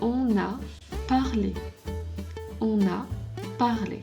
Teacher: And you notice that when I'm saying on, actually we make a link here between on and a. We call it in French liaison.